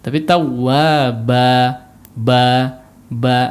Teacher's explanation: Jangan ditutup si pita suara sehingga terdengar seperti hamzah di ujungnya ya.